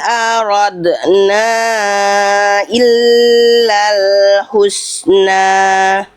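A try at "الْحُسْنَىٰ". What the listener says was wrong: Haknya hak kecil, tegaskan lagi hak kecilnya. Hu, husna, bukan hu, tapi hu, husna. Nah, ya sama kayak walayah itu kan udah bagus hak kecil. Ini juga sama hak kecil. Husna, bukan husna. Coba kita latih hak kecil dulu di buku. Hak kecil domahnya bunyinya nggak kuat. Jadinya nggak jelas bisikannya. Hu. Hu.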